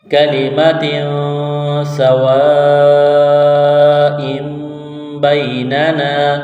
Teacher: ہے، با یا زبر بئی، نون زبرنا، بینا، نون علی زبرنا، الف مدہ ہے، ایک الف کے برابر کھینچنا ہے